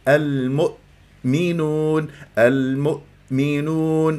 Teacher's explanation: اذا لما يكون عندي همزه ساكنه في وسط كلمه يجب ان اجعلها مقطعين حتى انا اتم قفل الاوتار الصوتيه وما تضيع مني الهمزه او انه اقلقلها او انه انا يعني